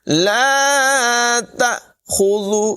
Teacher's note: اللہ لا الہ الا هو الحی القیوم لا تأخذہ، یہاں پر حمزہ ساکنہ ہے، حمزہ ساکنہ کو جھٹکا دے کر پڑھتے ہیں۔ لا تأخذہ، خا کو پر پڑھیں گے، ذال جو ہے اس کے بعد میں سیٹی نہیں نکالیں گے۔